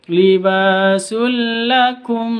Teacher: Tanwin bertemu dengan lam, masuk tanpa dengung. Libasul ditekan masuknya, libasul lakum tanpa ditahan atau tanpa didengungkan.